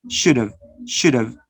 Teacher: You reduce, you use the weak form. Notice you're using the weak form and you connect should have